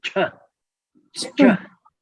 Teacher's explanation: CH actually is the same, but just aspirated C